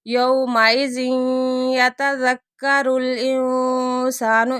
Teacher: تنوین کے بعد یا آ گیا، غنے کے ساتھ ادغام ہو رہا ہے